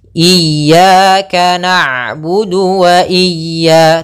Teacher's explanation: Ain itu sifatnya bainiah bainiah Apa itu bainiah yaitu tengah-tengah antara dialirkan suaranya atau ditahan suaranya